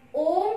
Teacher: प्लुत स्वर, इस स्वर के उच्चारण में हर्ष स्वर से 3 गुना समय लगता है, इसलिए इसके आगे 3 का अंक लगाते हैं।